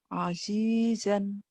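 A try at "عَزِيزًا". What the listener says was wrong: Bukan asisan ya. Agak keras.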